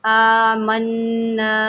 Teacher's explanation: نون کے اوپر تشدید ہے، اس کو ہم جو ہے غنہ کے ساتھ پڑھیں گے